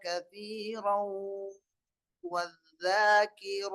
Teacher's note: ராவுக்கு மேல இருக்கக்கூடிய தன்வீனை அதுக்கு அடுத்து வரக்கூடிய வாவோட இணைத்து ஓத வேண்டும். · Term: இத்காம் நாகிஸ் பில் குன்னஹ்